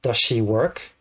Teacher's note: So when speaking, the S from does and the S from she contracts and form one connected sound.